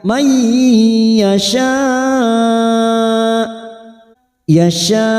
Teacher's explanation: nun sukun bertemu ya idgham bigunnah, kita tekan 3 ketuk, siap masuk kata huruf ya, may yasha, ada mad yang bertemu dengan hamzah dalam satu kalimat, namanya mad wajib muttasil, 4 harokat kita panjangkan sambil kita wakafkan.